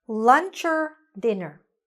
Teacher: this or would be connected to the word before and it will sound like ER. So the or now sounds like or, lunch or dinner, okay?